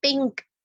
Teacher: نون کی آواز کو چھپا رہے ہوتے ہیں اور کیف کے قریب لے جا رہے ہوتے ہیں